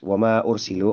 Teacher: bunyi panjang di kata kedua yaitu ma yang panjang itu, kemudian bertemu dengan hamzah di awal kata ursilu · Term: munfasil